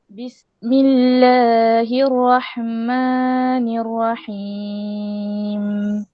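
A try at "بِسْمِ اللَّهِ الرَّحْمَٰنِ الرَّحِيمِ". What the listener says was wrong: Hirrahma panjang sikit sebab dia ada tawassut dekat situ. Hirrahma gitu.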